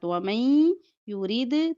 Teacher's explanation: नून साकिन के बाद या है तो इदगाम होगा गुन्ने के साथ